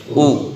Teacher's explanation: پیش جو ہے دونوں ہونٹوں کو گول کر کے پڑھتے ہیں